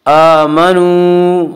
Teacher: आमनू वाव मद्दा वो वाव जो साकिन है उससे पहले पेश हो, वाव मद्दा को 1 अलिफ के बराबर खींच कर पढ़ेंगे